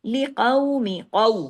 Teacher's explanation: ولی نبینہ لقومی، لقومی، قو، قاف کو ہیوی بھی کرنا ہے، قاف کو واو لین کے ساتھ پڑھنا ہے